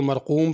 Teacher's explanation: اگر وقف کریں گے تو مرقوم پڑھیں گے اور غنہ نہیں ہوگا، اگر ملا کے پڑھیں گے تو غنہ ہوگا۔